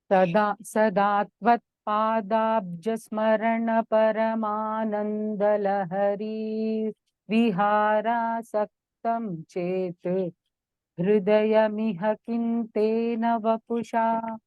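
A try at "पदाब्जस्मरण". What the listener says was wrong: Please listen to the recording. That Dvitvam you should get it clearer. Sadatvat Padabjasmarana Paramanandalahari Vihara. Two sirs should be heard. Dvitvam means Padabjasmarana. The two sirs should be heard. That is only Dvitvam.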